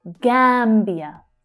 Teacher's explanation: So that first syllable there is the strongest one.